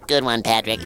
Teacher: The larynx is really high. However, it's very free and loose. It's never squeezed. It's always jiggling. And that's why he always kind of has vibrato or a sense of freedom in the sound, even though the larynx is high.